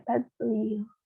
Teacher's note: Terus di sini kan ada juga ya do sukun, tapi do sukun ini nggak boleh dibaca mantul karena dia bukan merupakan bagian dari huruf qalqalah. Jadi dibaca biasa aja tadlil.